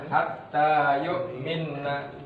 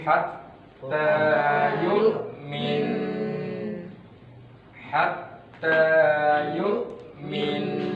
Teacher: karena hurufnya adalah huruf gunnah, maka dia harus didengungkan dengan cara ditahan.